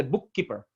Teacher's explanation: it's like two K's as with a germination but it is like the two words with the last letter